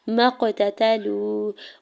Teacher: میم کے زبر کو قاف ساکن کے ساتھ ملاتے ہوئے قلقلہ کریں گے ، قاف ساکن پہ تا کے زبر کو بغیر کھینچے ہوئے